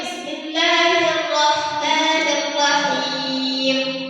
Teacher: Jadi huruf Snya atau sifat safirnya tidak disempurnakan